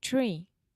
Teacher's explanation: So you start off with the ch sound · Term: TR sound